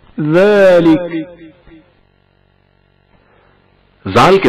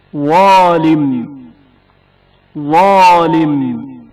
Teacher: वालिम जा की आवाज पुर तलफ़ुज़ होती है।